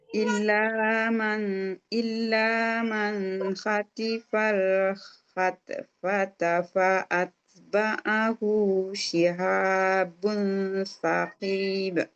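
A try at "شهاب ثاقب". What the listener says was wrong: Nah, sanya yang panjang. Saqib. Qafnya nggak panjang. Saqib. Jangan saqib. Salah. Saqib.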